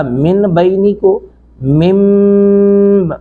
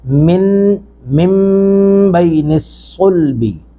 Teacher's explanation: اسی طرح من بین الصلبی، من نون ساکن کے بعد میم زیر نون من، با زبر یا بئی، یہاں پہ بھی نون ساکن کو میم سے بدلیں گے تو یہاں پہ بنے گا من بینی کو مم، ہونٹوں کو ملا کے غنہ کریں گے